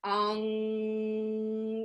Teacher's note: it's a very nasally sound that ang and then the tongue goes up the roof of the mouth